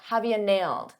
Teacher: For pronunciation, I said have you, but a lot of native speakers reduce you to just a ya